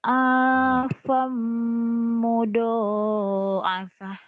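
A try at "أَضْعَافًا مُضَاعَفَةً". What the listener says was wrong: Kan itu sama juga do yang tadi. Apa modo Jangan mudo, jangan gede, jangan keras Lembut gitu loh. Kayak adonan ayah apa buat bikin apa bikin roti lembut. Afam mudo. Afam. Afam. Afam. Jangan ada e-nya ya. Jangan ada tuh. Nih dengerin ada e-nya enggak? Afam mudha'afah. qalqalah itu mah. Qalqalah. Afam.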